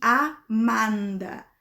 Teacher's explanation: a gente tem que cuidar para pronunciar o A bem aberto